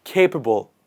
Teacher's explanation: please repeat after me with the stress on the first part capable